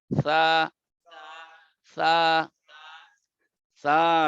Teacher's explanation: জিহ্বার আগা উপরের দাঁতের আগার সঙ্গে লাগাইবেন।